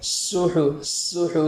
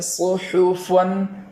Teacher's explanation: سین کے مخرج سے ادا کیا جائے اور ساتھ میں پور کا اضافہ کر دیا جائے تو یہاں صاد ادا ہو جائے گا